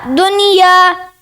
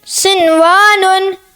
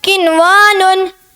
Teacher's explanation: ان چار کلمات، یہ جو نیچے چار کلمات ہیں، ان چار کلمات میں نون ساکن کے بعد حروف یرملون ایک کلمے میں آنے کی وجہ سے ادغام نہیں بلکہ اظہار مطلق ہوگا، اس لیے ان چاروں کلمات میں غنہ نہیں کریں گے